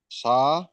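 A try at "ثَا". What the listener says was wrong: জি, একটু টান দেন একালি পরিমাণ, এই যে এক নিচে লেখা আছে, তাহলে সাকে একালি পরিমাণ টান দিয়ে পড়তে হবে, বলুন। সা।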